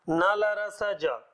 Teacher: वरस्य का मतलब होता है मसूड़ा। मसूड़े से बोले जाने वाले व्यंजन।